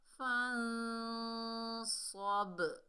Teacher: با جو ہے ڈبل ساؤنڈ آئے گی، یعنی اس میں جنبش پیدا ہوگی، حرکت پیدا ہوگی، اس کو ہلا کر پڑھیں گے کیونکہ یہ حروف قلقلہ میں سے ہے، ساکن حالت میں آ رہا ہے۔